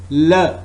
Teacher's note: it's voiced alveolar lateral approximant sound.